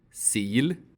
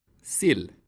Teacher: This vowel is i [iː]. Its short form sounds like [ɪ].